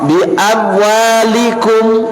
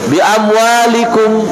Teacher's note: Proses cepatnya perpindahan, sehingga mem sukun tidak terbaca jelas.